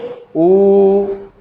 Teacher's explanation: आपका जिह्वा का पिछला भाग एक्टिव है, वो जो है नीचे थोड़ा सा गड़ रहा है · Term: पश्च स्वर